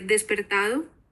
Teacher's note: la aspiración de la s que se da tanto en honduras como en cuba